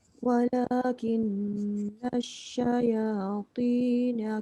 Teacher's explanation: Walakin dengung dua harakat.